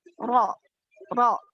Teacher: huruf ro itu ujung lidah bertemu sama langit-langit atas tapi dia hampir dekat dengan gigi depan ya jadi dia tidak pas langit-langit tegak lurus keatas Tapi dia